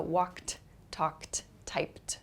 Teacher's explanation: It's spelled ed, but the pronunciation is a T sound.